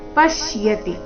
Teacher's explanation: ಪಶ್ಯತಿ ಅಲ್ಲಿ ಪ ಮೇಲೆ ಆಘಾತ ಬರಬೇಕು